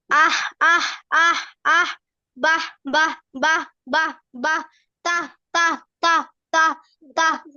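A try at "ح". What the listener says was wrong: হা এর মাখরাজ হয় নাই, ছোট হা এটা। আবার বলো, এটা তোমার কি বললাম, এটা স্বাভাবিক ভাবে বলতে বললাম না, কণ্ঠ চেপে যাচ্ছে তো।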